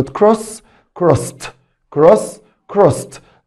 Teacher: لاحظ ان نطقت الاي دي هنا تي لانها جاء بعد السه ساوند